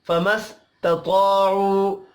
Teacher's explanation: پہلے تا ہے پھر طا ہے تا کو باریک جبکہ طا کو پر پڑھیں گے